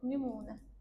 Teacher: Nümunə sözündə sadəcə u uzanıb. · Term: səs uzanması